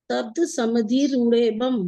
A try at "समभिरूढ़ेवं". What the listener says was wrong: समभि, समधि नहीं, समभि। समभिरूढ़ेवं।